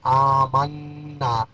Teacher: منا نون مشدد میں غنہ ہوگا